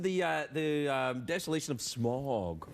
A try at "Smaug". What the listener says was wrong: The desolation of Smaug. Not smog. No, Smaug.